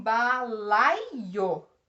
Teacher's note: o A é a vogal, o I é a semivogal, pois só está acompanhando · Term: ditongo